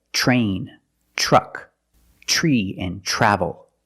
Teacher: we pronounce it ch ch plus the r sound · When you have TR together in any situation, you can pronounce it ter, but usually we don't. We pronounce it ch plus the R sound, chur. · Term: CH sound